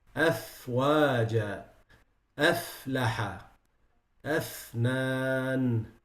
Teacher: The pronunciation point of it is from the inside of the lower lip, with the tips of the upper two incisors. F. You see the upper two incisors with the lower lip. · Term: harf al-fa